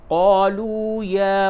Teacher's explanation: वाव मद्दा है इसको थोड़ा सा खींच के पढ़ेंगे